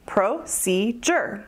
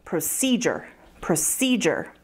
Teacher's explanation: Procedure has three syllables, procedure, with the emphasis on the second syllable